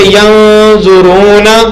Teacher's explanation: تو اس پر کیا کرنا ہے اخفا کرنا ہے. نون کی آواز کو ناک کے اندر چھپا کر پڑھنا ہے